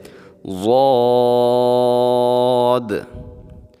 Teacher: ضاد کو بھی موٹا پڑھیں گے، اور اس کے لاسٹ میں ہم نے دال کو واضح کرنا ہے